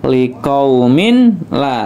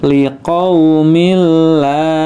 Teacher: langsung dimasukkan ke huruf lamnya, liqaumil la gitu ya, tidak liqaumin la, tapi liqaumil la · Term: idgham bila gunnah